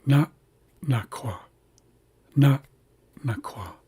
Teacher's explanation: So this second glalized N has a slight pause in front of it. So we hear na and then a slight pause and then naqua · You're closing your glottis before that second glottalized N. And then saying the rest of the word. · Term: glottal stop